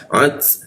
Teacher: Tak mati ada desisan tipis ya.